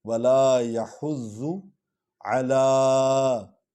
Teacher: لام پر کھڑا زبر ہے، اس کو تھوڑا لمبا کریں گے۔ علا، عین کا جو مخرج ہے وہ اقصی حلق سے یہ نکلتا ہے، درمیان سے حرف حلقی ہے، اس لیے اس کو ظاہر کریں گے۔